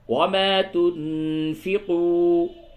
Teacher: تنفقوا، تنفقوا نون ساکن کے بعد فا ہے، اخفا ہوگا اور واو مدہ ہے، اسے تھوڑا سا کھینچیے